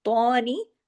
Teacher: تو کو ہیوی بھی کرنا ہے، تو پہ کھڑا زبر بھی پڑھنا ہے الف کے برابر بھی